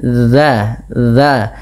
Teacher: kita menempelkan ujung lidah dengan ujung gigi seri atas sehingga terdengar bunyi dza dza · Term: dzal